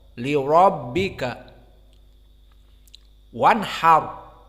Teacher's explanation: Maka ra mufakhamah karena dia fathah. Wal ba muraqqaqah wal kaf muraqqaqah.